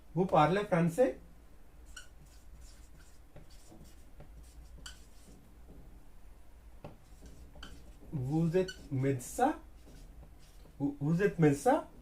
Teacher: At the end of the sentence, you are going to raise your tone, which makes the sense of question. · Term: intonation